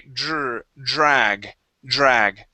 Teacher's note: treat that D sort of like a j we make a vibration sort of like if you were to say job okay we're